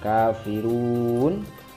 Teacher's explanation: Kafirun itu mat tobi'i bertemu nun yang sukun waqaf menjadi mat lin 3 ketukan